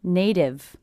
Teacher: it's a T coming between 2 vowel sounds, will be a flap T, sounds like a D. Like a native speaker.